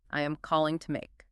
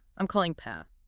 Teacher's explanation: We are dealing with connected speech and assimilation here. Native speakers do not pronounce the word to with a hard oo sound in the middle of a sentence. It reduces to a schwa, a lazy, relaxed sound. It becomes two, or even just two.